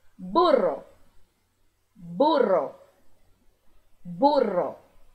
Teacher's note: Lembrando que o RR vai vibrar por mais tempo não é apenas burra é burra burra a e agora o